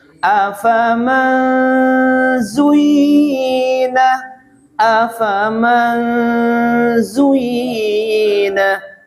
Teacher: Menyamarkan suaranya nun mati ke dalam z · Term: bacaan ifa